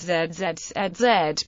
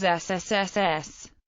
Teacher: on context if one places the fingers on the voice box one can feel a vibration when one pronounces z z z z but not when one pronounces ssss